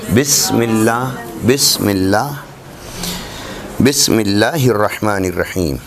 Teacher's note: اس کے بعد فرماتے ہیں کہ لکھ لی عبارت، ہونٹوں کے متصل ہوں تو با کی ادائیگی ہوتی ہے۔ با، دونوں ہونٹوں کے اندرونی تر حصے متصل ہوں تو با کی ادائیگی ہوتی ہے۔ ہونٹوں کے بیرونی خشک حصے ملیں تو میم ادا ہوتا ہے۔ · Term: حرف با